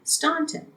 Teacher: it was pronounced with a broad A sound